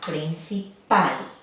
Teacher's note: el acento naturalmente, el acento fonético es en la última sílaba